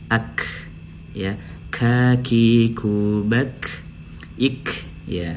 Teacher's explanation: Ada hembusan nafasnya sedikit. Qaf dan kaf ada perbedaan.